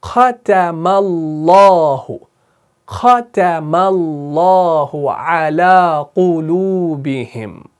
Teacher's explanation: اب اللہ کے لام کو پر پڑھتے ہیں کیونکہ ما قبل آپ کا مفتوح ہے, یعنی زبر کے ساتھ ہے.